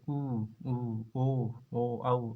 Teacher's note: जिन स्वरों के उच्चारण में होठों का आकार गोलाकार हो जाता है उन्हें वृत्ताकार स्वर